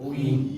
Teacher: 반모음 우에서 이로 우이 이렇게 발음하는 거예요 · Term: 이중 모음